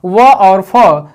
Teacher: व और फ दांत और ओठों के सहारे बोले जाते हैं, इन्हें कहते हैं दंतोष्ठ।